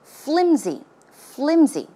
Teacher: it's not pronounced with an s sound but it's closer to a z z sound